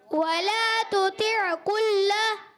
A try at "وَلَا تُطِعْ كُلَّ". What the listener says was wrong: کُلَّ میں عین کی آواز نہیں ہے، کُلَّ،